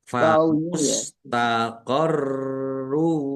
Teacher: roknya ada tasdidnya dibaca double